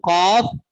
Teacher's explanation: ये लहात के करीब से अदा होते हैं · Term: हरूफ लहातिया